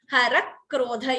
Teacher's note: Harakrodha. You see that k is doubling. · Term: dvitvam